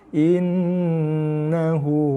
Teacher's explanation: Ambil nafas Innahu hakimun alim. Okey, jaga nun sabdu kita dengung, tekan pada nun, dengung dan lepaskan dengan baris dia. Okey, sebab sabdu atas nun, sabdu atas ba tak perlu dengung, tak boleh dengung pun.